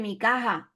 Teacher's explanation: ya casi que se pierde y casi que se convierte en una J aspirada